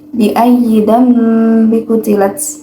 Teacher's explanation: terdapat hukum bacaan ikfa hakiki, jadi dibacanya dengung samar-samar